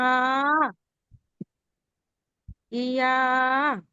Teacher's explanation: জিভের মাঝখান উপরের তালুর সাথে